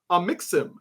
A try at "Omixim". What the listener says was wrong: It's pronounced Omixim, by the way. It's a hard O.